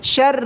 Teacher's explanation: را پر تشدید ہے، شین کو را کے ساتھ ملائیں اور سختی کے ساتھ ادا کریں۔ شر، شین را زابر شر، را لام زیر رل، شر، را کو باریک پڑھیں گے کیونکہ را پر جب بھی زیر آ جائے تو را کو باریک پڑھا جاتا ہے۔